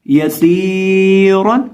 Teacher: जो सीन है इसके अंदर हमने सीटी की आवाज पैदा करके पढ़ना है, और इसको हमने एक अलिफ के बराबर लंबा करके पढ़ना है और रॉ को मोटा पढ़ना है